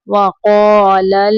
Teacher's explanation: लाम को कुलकुला नहीं करना, लल नहीं करना।